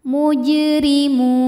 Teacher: maka kita bunyikan dengan pantulan yang kecil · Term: Qalqalah Sugra